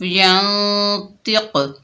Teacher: یہاں پر قلقلہ بھی ادا کریں گے. ڈبل ساؤنڈ ہوگا، قاف کی آواز پلٹ کر واپس آئے گی · وقف کی حالت میں قاف کا پیش ختم ہو جائے گا، قاف ساکن ہو جائے گی اور یہاں پر قلقلہ بھی ادا کریں گے.